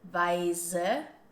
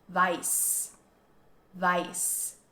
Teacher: we have a voiced S sound here, weise, versus the word for white, the color white, weiß, weiß, with a unvoiced S sound